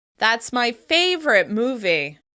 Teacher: I'm underlining the word favorite so that there's no doubt in anyone's mind how I feel about the movie.